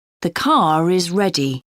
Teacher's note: When the word is linked to a word beginning with a vowel, the r sound reappears.